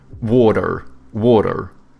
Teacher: Americans, they have like soft T's and then they pronounce their R's, so they go like water, water, you know?